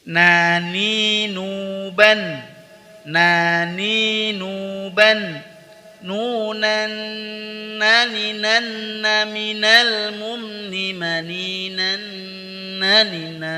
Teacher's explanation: Ujung lidah disentuhkan pada gusi 2 gigi seri atas di antara posisi ro dan lam. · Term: huruf nun